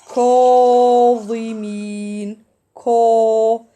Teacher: I elevate the deepest part of the tongue, give it the heaviness